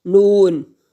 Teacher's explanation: اور نون کو ناک میں آواز کو نہیں لے کے جانا، نون۔